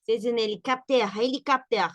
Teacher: así con la H, así como aspirada